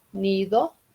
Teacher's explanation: Si digo nido, nido, ya es alveolar, porque la lengua por la I va más arribita cuando digo nido